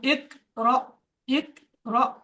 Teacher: সাকিনওয়ালা হামজা কি ঝাটকা দিয়ে পড়তে হয়